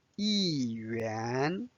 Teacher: 1 changed to fourth tone here because the following is the second tone.